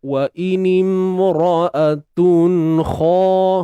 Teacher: Wa inimra'atun kha, huruf kha tebal, kemudian panjangkan 2 harakat mat asli. Huruf kha tebal, angkat pangkal lidah untuk dapatkan hasil suara tebal tu, bunyi tebal tu. Kena angkat pangkal lidah.